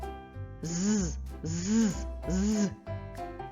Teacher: він приголосний є перепона для видихуваного повітря язик та зуби вимовляємо твердо чи м'яко з вимовляємо твердо звук з твердий позначаємо · горло дзвенить вібрує ми долонею відчуваємо вібрацію голосових зв'язок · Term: дзвінкий